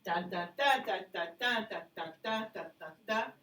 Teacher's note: it is two unstressed followed by a stress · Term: anapest